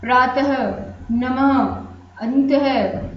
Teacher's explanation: ये चिन्ह होता है विसर्ग का, यानी ये दो बिंदु आपके सामने जो है, ये विसर्ग का चिन्ह होता है और इनसे ह की आवाज निकलती है